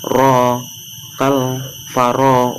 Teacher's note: ro nya itu berharokat fathah maka disebut ro tafhim, dibaca tebal ro.